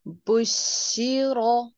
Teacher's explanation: बुशिरा में रॉ की जबर को आप पुर करके पढ़िए